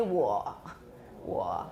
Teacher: you're creaking and then the creaking comes to a halt it gets slower